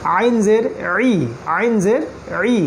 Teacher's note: আইন গলার মাঝখান থেকে, আইন জের ই, আইন জের ই গলার মাঝখান থেকে, আইন জের ই।